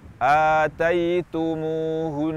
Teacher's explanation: Sehingga ketika kita waqaf pada kata ataitumuhun, kita gunnahkan dengan gunnah yang lama, sebagaimana ketika kita wasal membacanya dengan gunnah yang lama.